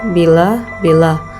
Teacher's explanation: Bunyi I, ciri-ciri tinggi depan tak bulat.